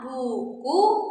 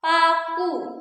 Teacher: kita punya bunyi vokal U. U tinggi atas belakang ya. Contohnya pada kata buku dan pada kata paku.